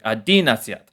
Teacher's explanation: That's the accents on the second syllable, not the first syllable